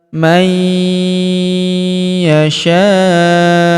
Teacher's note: nun sukun bertemu huruf ya berharakat tasydid maka nun sukunnya melebur ke huruf ya yang berharakat tasydid. Kita tahan dan kita tekan serta kita dengungkan dua sampai harakat.